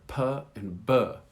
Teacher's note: there is this explosion of air that comes from the release of your lips. And so you want to practice this.